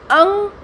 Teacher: और अंग, इनको ऐसे समझिए, अंग, तालु और कंठ और नाक, इन 3 चीज़ों का इसमें इस्तेमाल हुआ और तब हमने अंग बोला। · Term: नासिकीकरण